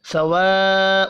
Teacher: واو مدہ 1 الف کے برابر کھینچ کر پڑھا جائے گا. سواء بڑی مد 5 الف کے برابر کھینچ کر پڑھیں گے.